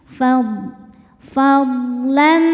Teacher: Huruf dhad punya sifat istitolah, makhrajnya memanjang ya.